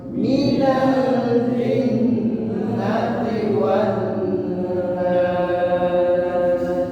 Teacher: Nada yang keenam turun